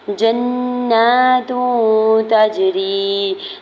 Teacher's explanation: جیم کی زبر کو نون مشدد کے ساتھ ملاتے ہوئے نون مشدد پہ غنہ کریں گے، اوپر کھڑی زبر دوڑ کر کھینچ کے ادا کریں گے۔